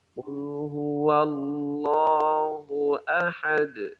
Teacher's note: kalau kita berhenti ya berhenti di huruf dal dengan kita qalqalahkan